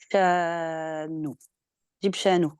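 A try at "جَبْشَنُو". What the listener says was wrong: Ouais, juste au début, pareil, ici, la lettre, elle est juste, mais pas ton accent. T'as dit J. Voilà, c'est J. Sinon, tes lettres, elles sont toutes justes, hein, c'était juste les accents. fait, ça va avec, c'est vrai, quand on voit Jim, on a envie de dire J.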